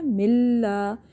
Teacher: یہاں پہ ادغام بلا غنہ ہو رہا ہے، یعنی غنہ نہیں کرنا. نون ساکن ہو یا نون تنوین کے بعد آگے لام اور را نظر آ جائے تو ہم نے ادغام بلا غنہ کرنا، یعنی غنہ نہیں کرنا.